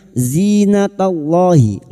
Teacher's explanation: Lam jalalah yang didahului fathah. Kita baca tafkim. · Zi kasra bertemu ya sukun dua harakat. Mad thobi'i.